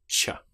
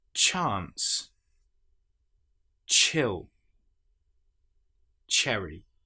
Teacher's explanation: The ch sound, exactly the same shape, but this time we don't have our vocal cords engaged. We're just making the sound ch.